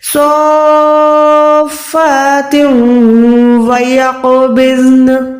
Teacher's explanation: منہ سے ادا نہیں کرنا بلکہ ناک سے ادا کرنا ہے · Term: ادغام